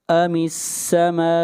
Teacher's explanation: ام السماء یہاں پر مد متصل ہے، اس مد کو 3 الف کے برابر کھینچ کر پڑھا جائے گا